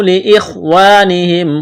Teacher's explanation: واو مدہ ہے، ایک الف کے برابر کھینچنا ہے، قالوا لاخوانہم خا کو موٹا کرنا ہے، واو مدہ ہے